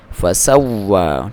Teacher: ہونٹوں کی گولائی کے ساتھ فسواہن. نون پہ آپ نے ایک تو غنہ کرنا ہے، دوسرا دبانا ہے، فسواہن 7 سماوات، کیونکہ اس پہ شد بھی ہے.